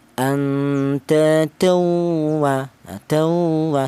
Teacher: Kemudian di sini ada tawa, ada tanwin bertemu dengan wawu, dibaca idgham bi gunnah, yaitu tanwin ini cara bacanya langsung dimasukkan ke huruf wawu